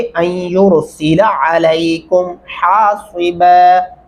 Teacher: अलैकुम आइन गले से अदा करेंगे, अलैकुम नहीं पढ़ना, वरना फिर आप अलिफ लगा देंगे जिसकी वजह से इसका तर्जमा बदल जाएगा।